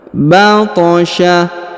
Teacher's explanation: Huruf to dipantulkan atau dikolkolahkan karena berharokat sukun